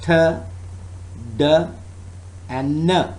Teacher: and now for example in the consonants term duh and no the tongue tip touches the alveolar Ridge and cuts off the airflow at that point that is the manner of articulation earth air flow is cut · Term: stop consonant